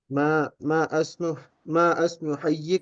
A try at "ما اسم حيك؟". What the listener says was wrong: ما اسمو نہیں بولیں گے، مسمو بولیں گے اس کو، مسمو.